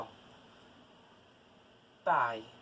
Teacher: pai o pai tem um ditongo oral olha só o pai esse aí é um ditongo aberto oral